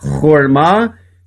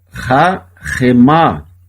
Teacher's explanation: Se em cima eu tenho um O e um A, embaixo eu tenho um A na primeira sílaba e um A na segunda sílaba. O Shevá aqui ele é mudo, por isso que lê horma, e aqui ele é pronunciado rahemá.